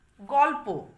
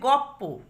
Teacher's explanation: তাহলে লয় প ছিল, পূর্ববর্তী ব্যঞ্জন ল পরবর্তী ব্যঞ্জন প। দেখো পরবর্তী ব্যঞ্জন পই থেকে গেছে, তাহলে পূর্ববর্তী লকে প্রভাবিত করে পয়ে রূপান্তরিত করেছে